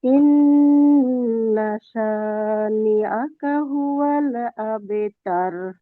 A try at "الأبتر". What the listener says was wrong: আচ্ছা আপু, আবে তার একটু মোটা হবে। আবে তার, আবে তার, ইন্না শানিআকা হুয়াল আবতার।